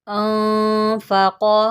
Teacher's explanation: क़ाफ़ को मैंने मोटा पढ़ा है